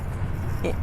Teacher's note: را ساکن سے پہلے زبر ہے، تو ہم یہاں را کو فل ماؤتھ کریں گے